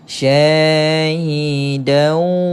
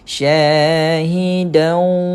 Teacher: Apa yang dimasukkan ni, tanwin ini dimasukkan sebutannya ke dalam waw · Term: Idgham